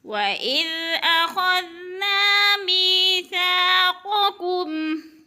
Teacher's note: یا ساکن سے پہلے میم کے نیچے زیر ہے تو یا مدہ ایک الف کے برابر کھینچ کر پڑھنا ہے